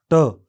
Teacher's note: इस ध्वनि के उच्चारण में फेफड़ों से आने वाली हवा बंद स्वर यंत्रों से होकर आती है। जीभ का सिवा पीछे की ओर मुड़कर कठोर तालु को छूता है।